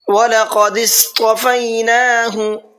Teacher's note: قاف کو پر کر کے پڑھنا ہے اور صاد کو بھی اور طا کو بھی، تینوں کو پر کر کے پڑھنا ہے اور نون کو کھینچ کر کے پڑھنا ہے۔